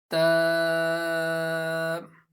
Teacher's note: مخرج کے مطابق زبان کو اوپر دانتوں کی جڑ پر لگائیے · اس میں بھی ہم نے یہاں پر بھی آپ بریکٹ کے اندر دیکھیں کہ تا کے ساتھ الف لکھا ہے، تو اس کا بھی یہی مطلب ہے کہ تا کو بھی ہم 1 سیکنڈ کھینچ کر 1 سیکنڈ لانگ ریڈ کریں گے